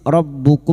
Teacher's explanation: Rabbukum mim sukun bertemu ha, mim sukun dibaca jelas tanpa mendengung idhar syafawi.